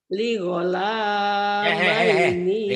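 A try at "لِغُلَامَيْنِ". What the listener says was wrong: Ligola. Jangan ligola. Mentang-mentang ibu sering O-nya nggak bisa. Ligula. Gula. Bukan gola. Ligula. Ninya pendek. Ligula maini ya. Nia.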